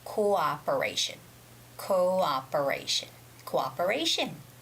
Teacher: you have to separate those two o sounds so the first o would be co and the second o would be ah